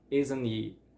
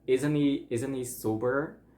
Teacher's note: it's kind of like you don't say the T at all. You're gonna only hold it, and it's kind of difficult to explain, but it's gonna sound like isn't he, like it's kind of like you skip the T and then you're going to ni, like it sounds like N and E.